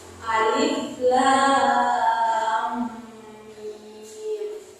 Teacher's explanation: sesuai nama asli huruf hijaiyah dibaca panjang enam harakat. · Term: huruf muqataah